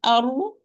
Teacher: When you say ar, the tip of the tongue will trill, but only once because of the tight articulation point. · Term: ra